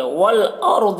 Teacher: را کو پر پڑھیں گے اور ضاد کو بھی پر پڑھیں گے